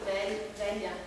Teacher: é movimentando-se até o final do palato duro um exemplo velho a corrente de ar Então passa por trás dos últimos molares saindo por entre as partes externas dos dentes e a bochecha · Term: lateral